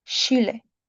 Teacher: Words that contain a CHI are replaced with the English SHE sound.